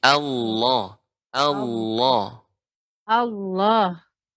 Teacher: Allahnya dibaca dengan tafkhim tebal. Allah, bukan Allah, bukan Allah, enggak monyong.